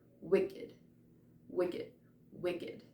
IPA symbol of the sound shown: ɪ